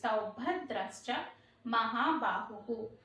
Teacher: ఆ భ అనేది మహాప్రాణ అక్షరం అండి.